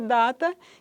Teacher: o D, que é oclusiva, alveolar, vozeada